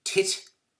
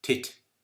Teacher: So for example, if I were to say the English word tit, T-I-T, the blade of the tongue is touching the alveolar ridge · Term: alveolar T